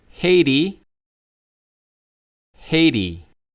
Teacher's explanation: most Americans would probably pronounce a T more like an R or a D. It's actually called a flap consonant if you want to get technical.